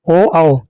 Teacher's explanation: अगला नंबर है कंठोष्ठ्य, ओ औ। इन ध्वनियों का जन्म कंठ और ओठों के सहयोग से होता है